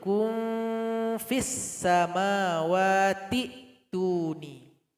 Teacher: Huruf kaf dengan dua dammá, ketika melakukan ikhfa ke arah fa, nasalisasi, yaitu bunyi yang tidak jelas, diarahkan ke bibir bawah. bertemu dengan gigi seri atas